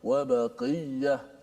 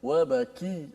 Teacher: Qaf dia agak tebal, kaf dia nipis sedikit.